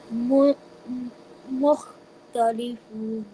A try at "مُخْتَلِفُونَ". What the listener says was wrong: What about the noon at the end? Mukhtalifun. Like this.